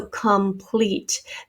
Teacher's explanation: our vowel in the other syllable has become a schwa so complete this o has become a schwa sound